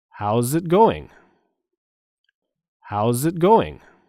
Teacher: the stress is on the syllable go and going